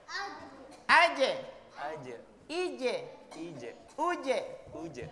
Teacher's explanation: Qalqalah itu artinya dipantulkan. Pantulannya biasanya condongnya ke e, tapi tidak boleh e-nya kuat.